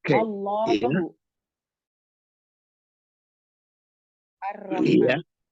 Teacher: Menurut pendapat yang paling benar atau sahih, huruf lam menyeberang ke ujung lidah, sedangkan ro ke punggung lidah dengan sedikit bergeser ke arah huruf lam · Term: inhiraf